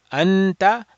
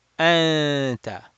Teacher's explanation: you're not doing the noon mahraj you're hiding that and you're just doing a nasal sound